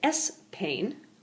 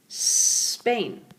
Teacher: that s sound so rather than trying to say s pain all you need to do is extend the S at the beginning